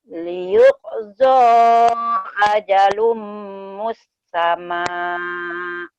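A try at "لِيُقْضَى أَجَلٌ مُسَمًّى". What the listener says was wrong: Enggak nyamber ya, enggak ke mus, tapi musamma. Lagi teh.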